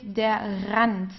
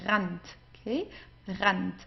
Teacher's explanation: whenever you have an R and then you have a vowel right after that, you pronounce it from the throat. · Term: German R